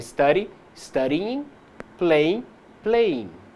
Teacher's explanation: O segundo ponto com o qual temos que ter cuidado é que, quando o verbo termina com o som de i, como ocorre com o verbo to study, esse som final não se mescla com o do ing. É como se estivéssemos dois sons de i, um mais forte do próprio verbo e outro mais fraco do in, do ing.